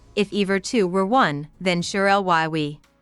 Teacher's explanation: The lines are written in iambic pentameter, meaning each line has 10 syllables with a rhythmic pattern of alternating unstressed and stressed beats